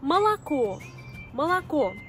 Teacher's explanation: quand la voyelle O est atone, quand elle n'est pas frappée par l'accent tonique, elle se prononce A. Parce que en russe, il y a l'accent tonique.